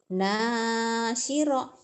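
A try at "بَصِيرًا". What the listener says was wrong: Itu titiknya di bawah. Basira. Sad. Basira.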